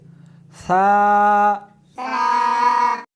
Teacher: اس حرف کو زبان کو دونوں دانتوں کے درمیان رکھ کر پڑھیں گے، ثا، شاباش۔